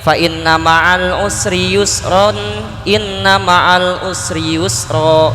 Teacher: Kalau diwasol mah nggak bisa jadi mad iwad, tetap jadi izhar, tanwin ketemu hamzah kesananya.